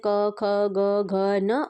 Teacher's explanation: जिनका उच्चारण कंठ से होता है, तो आपका क वर्ग के जो है वो सारे आपके कंठ में आते हैं